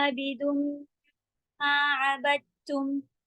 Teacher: मीम के पर गुन्ना लगा, शद्दा लगा है, गुन्ना करेंगे